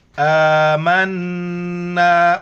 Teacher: کے اوپر کڑا زبر ہے، ایک الف کی مقدار کھینچنا ہے، نون پر جو غنہ کرنا ہے، ناک میں آواز چھپانی ہے